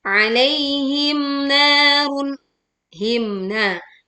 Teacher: mim sukun dibaca jelas, tidak melebur kena, tapi juga tidak memantul.